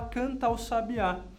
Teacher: Quase como se o artigo o, estivesse ligado ao fim do verbo cantar. E aí você considera o fim desse verbo junto, ligado ali no o, considera uma sílaba só.